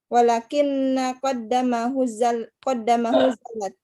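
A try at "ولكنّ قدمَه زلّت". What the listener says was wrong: Walakinna qadamahu, tidak ada tasydid.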